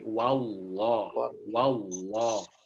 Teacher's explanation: Pada saat Anda baca fathah di huruf waw, kita membacanya tetap membaca wa, jangan ditebalkan, jangan ke wo.